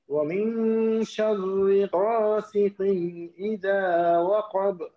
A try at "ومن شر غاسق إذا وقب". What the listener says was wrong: شرري موتا হয়ে যাচ্ছে, شرري পাতলা হবে, شرري